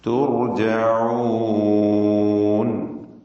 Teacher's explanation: തു ഇസ്തിഫാലിന്റെ തർക്കീഖ് ചെയ്യേണ്ട അക്ഷരമാണ്. എന്നാൽ റാഇ തഫ്ഖീമാണ്. ആ തഫ്ഖീം തായിലേക്കും ചേർന്നുകൊണ്ട് ത്വാ പോലെ ഉച്ചരിച്ചു പോവുക.